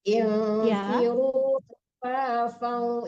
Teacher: Infiru khifafan itu ditarik ke hidung ya. Setiap tanwin ketemu waw walaupun wawnya tidak ada tasdidnya, tarik ke hidung itu dengung.